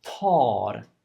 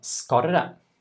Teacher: you can see that the A is very long. But when I say skarre, the R is short, the A is short. What I do about the R is not so important.